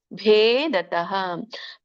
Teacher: ಭ ಮಹಾಪ್ರಾಣ ಮತ್ತೆ ದೀರ್ಘ ಇದೆ